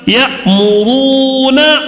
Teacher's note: کیوں کھینچ رہے؟ واو مدہ ہونے کی وجہ سے